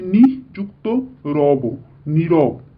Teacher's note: এরপর দেখো আমরা জানবো যে বিসর্গ কখন লোপ পায়, বিসর্গ সন্ধিতে বিসর্গটা চলে যায়, থাকে না, কিন্তু তার পূর্বের যে স্বরধ্বনি থাকে সেই স্বরধ্বনিকে দীর্ঘ করে। দীর্ঘ করে মানে হ্রস্ব ইটা দীর্ঘ ই হয়ে যায়, হ্রস্ব উটা দীর্ঘ উ হয়ে যায়, এরকম দীর্ঘ করে দেয়।